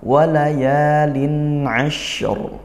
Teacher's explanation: Walaya ini dibaca panjang, satu alif atau dua harokat, hukumnya mad tabi'i. Kemudian lin'a ini izhar qamariyah.